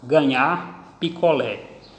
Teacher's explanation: todas essas palavras tiveram a sua tonicidade na última sílaba